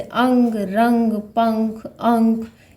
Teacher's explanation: नाक से जो है श्वास बाहर ज़्यादा निकलता है, मुख का प्रयोग कम होता है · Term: अनुस्वार